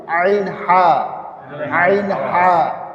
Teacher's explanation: আইন হা গলার ভিতরে, হ্যাঁ হ্যাঁ মাঝখান থেকে উচ্চারণ হয়, এটাকে একটু চাপ দিয়ে পড়তে হবে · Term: 2 নম্বর মাখরাজ